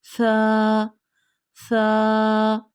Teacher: जुबान की जो नोक है वो ऊपर वाले दांत के सिरे से जाकर लग रही है